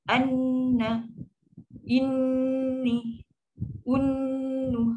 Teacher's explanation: Yang panjang tu dengung tu. Huruf dia tetap satu harakat.